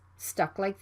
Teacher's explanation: is right before the consonant l so it can be unreleased you need to stop the k sound and move to the l sound right away · the plosive consonant k is right before the consonant l so it can be unreleased you need to stop the k sound and move to the